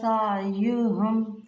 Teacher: سعیہم عین کے ساتھ، سعیہم جھٹکا نہیں دینا، سعیہم نہیں کرنا، نرمی کے ساتھ